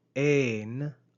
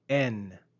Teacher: Notice the long eta, ain, on the verb and the short epsilon, en, on the preposition.